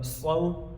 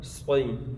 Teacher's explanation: اب صاد حروف مستعلیہ میں سے ہے، اس کو موٹا کر کے پڑھیں گے